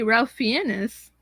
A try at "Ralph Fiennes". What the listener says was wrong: It's Rafe Fiennes. That's how it's pronounced, actually. Oh, Rafe Fiennes. That's the other way they pronounce Ralph, and it's different. There's some Ralph, and then sometimes it's pronounced Rafe.